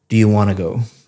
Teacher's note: Want to go sounds like one word, want to go, because you're connecting all the speech up. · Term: connected speech